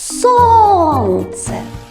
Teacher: правильно наголошений склад у нас сон і ми поставимо наголос